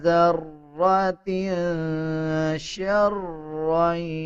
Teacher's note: تا کے نیچے دو زیر ہیں اس کے بعد شین آ رہا ہے، اس پہ اخفا بھی کیا جائے گا یعنی غنہ کیا جائے گا